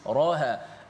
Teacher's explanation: Ra dengan ha sama tebal. Sepatutnya ra yang tebal, ha nipis.